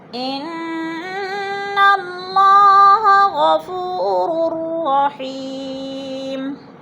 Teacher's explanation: اور اللہ پر پڑھا جائے گا، اللہ سے پہلے لفظ نون کے اوپر زبر ہے تو اللہ کو پر کر کے پڑھیں گے